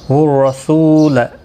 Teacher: را زبر کی وجہ سے پر پڑھا جائے گا، سو واو مدہ ہے، لا کو کھینچنا نہیں۔